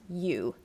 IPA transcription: juː